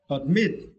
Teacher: for this word you need to stress the second syllable, mit. Okay, admit.